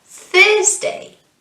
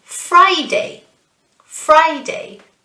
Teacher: the stress is on the first syllable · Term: syllable stress